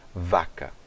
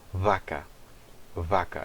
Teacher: Quando ele não tem o dagesh, eu vou pronunciar como um som de um V, mas é um som bilabial, não é um som lábio-dental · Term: V bilabial